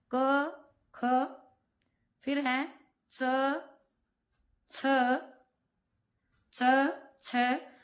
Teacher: वर्ग का जो पहला और दूसरा वर्ण है वो क्या है? अघोष है।